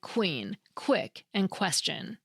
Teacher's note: the U adds the /w/ sound right after it. Together, they create that distinctive /kw/ sound